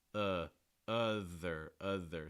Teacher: the mid back of my tongue is high the front of my tongue is down and the very back of my tongue is down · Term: schwa